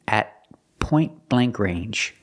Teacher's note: The T in at is a stop T at point blank range. The T in point is between consonants, so you don't really hear it.